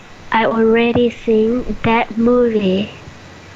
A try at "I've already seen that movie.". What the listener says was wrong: You have to emphasize the v. I've already seen that movie.